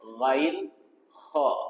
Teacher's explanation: Dari penjelasan guru-guru kita, dia tidak melewati makharijul huruf kha. Kha ini di pangkal tenggorokan